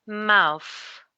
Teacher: And the vowel sound is going to be a diphthong in the middle, which is ow.